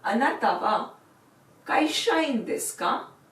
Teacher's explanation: add the particle ka at the end, and while reading it, you will do it with rising intonation.